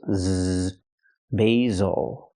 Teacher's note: The S makes the Z sound, like zebra. Make a vibration. Use your voice. Z, basil. Again, not basil, but basil, because the stress is on the first syllable, not the second one.